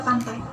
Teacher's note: mulut dibuka untuk vokal A atau posisi mulut lebar dan lalu bergerak ke posisi I. Mulut sedikit tersenyum. Proses itu tidak bergerak dari belakang mulut untuk A dan ke depan untuk I. · lidah bergerak dari belakang mulut untuk A dan ke depan untuk I. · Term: diftong